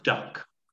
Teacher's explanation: the tongue touches the top of the mouth behind the front teeth